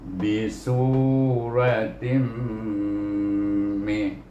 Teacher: Serta tanwin di bawah bunyi tin, eh? Tetapi tanwin ini bertemu dengan huruf mim baris bawah ini, maka kita kena baca dengan idgham al-gunnah